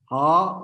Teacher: जो हा होता है वह कंठ से आता है